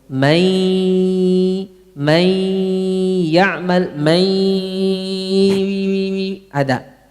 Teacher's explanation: Gunnahnya ini sebagian di hidung, sebagian dari mulut. Enggak murni semua dari hidung.